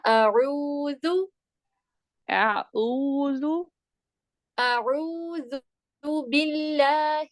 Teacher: ہونٹوں کو گول کریے، ضمہ ہے نا عین کے اوپر، پیش ہے، اس کے لیے آپ کو ہونٹوں کو گول کرنا پڑے گا